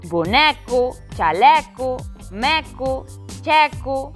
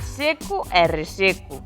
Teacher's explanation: As palabras terminadas en eco, incluído eco, son con E aberto.